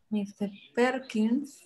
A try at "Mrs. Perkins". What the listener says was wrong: No, not Mr. Mrs.